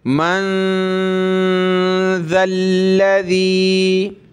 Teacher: नून साकिन है, नाक में आवाज़ पैदा करेंगे